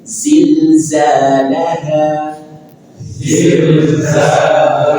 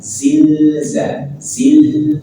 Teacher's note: Zilzalaha ada lam sukun dan dia lam punya sifat bainiah. Sedikit alirkan suara zilza. Zil ada sedikit aliran suarazil.